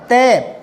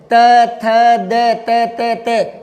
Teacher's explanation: जीभ दांतों से टकराती है